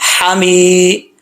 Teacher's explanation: اب اس کو ایسے نہیں پڑھنا حمید مجید، حمید مجید نہیں، میم کے بعد یا ہے، ایک الف کی مقدار، اس کو لمبا کیا جائے گا، میم زیر یا می، حمی۔